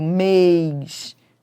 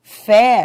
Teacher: Mês tem timbre fechado, mês. Fé tem timbre aberto, mas ambas são tônicas, porque são fortes.